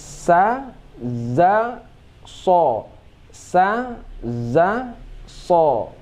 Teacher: Jadi merubah hujung bibir saja, ya, sedangkan tempat keluarnya sama.